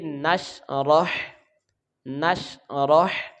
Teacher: नून को शीन के साथ मिलाएंगे तो ये गैर कलकला है तो बगैर जुम्बश के साथ पढ़ेंगे। रा को हा के साथ मिलाएंगे, इसकी आवाज़ का ख्याल रखना है।